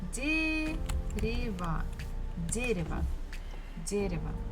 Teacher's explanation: Stress falls on the first syllable, so the first syllable we must pronounce as it is, де. But next one, ре, is not stressed, so we can change it into E.